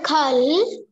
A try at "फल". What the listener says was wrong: नॉट ख फ फ फ फ फल फूल फूल फावड़ा